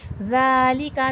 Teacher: ज़ाल अभी मैंने बताया नरमी वाला हर्फ है, नरमी से पढ़ा जाएगा और खड़े ज़बर है, थोड़ा खींच के पढ़ा जाएगा।